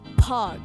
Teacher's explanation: In the word pag, you can hear the H sound, but it's not technically a consonant. It's not like bahag, it's pag.